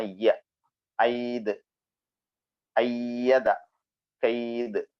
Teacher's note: യ നാവിന്റെ മധ്യവും അതിന്റെ മുകൾ ഭാഗവും മേലെണ്ണാക്കും ചേർന്ന് വരുന്ന അക്ഷരമാണ്